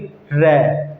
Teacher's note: जब वो ऊपर से होकर के नीचे लगता है, उच्चारण करते हैं हम र का, तो उसमें कंपन उत्पन्न होता है जीभ में, ठीक है। बोल उच्चारण करके देख लीजिएगा आप, जब आप बोलोगे र, ठीक है, तो कंपन होगा जीभ में, बहुत अधिक कंपन होगा, जिससे पता लग जाएगा कि ये प्रकंपित ध्वनि है, ठीक है दोस्तों।